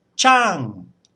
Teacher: That's as if you're calling someone from a distance. So you put a lot of energy into the start of the word and then it sort of falls away. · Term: falling tone